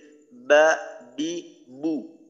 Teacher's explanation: বা যখন আমরা উচ্চারণ করব তখন ঠোঁট স্বাভাবিকভাবে উপরের ঠোঁটটা নিচের ঠোঁটের সাথে যেমন ভাবে লাগে ওইভাবেই চাপ দিয়ে উচ্চারণ করব।